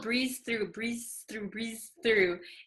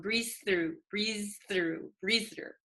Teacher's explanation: Okay, so when we say it very quickly, you might notice that I said, I'm sure you'll breeze through, breeze through, breeze through. The z and the th almost become one.